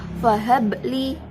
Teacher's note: bacaan qalqalah sugro sebab ba mati asli